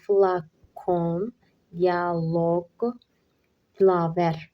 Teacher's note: Bu sözlərdə vurğu sona düşür və biz də vurğusu sona düşən sözləri seçib yazmalıyıq.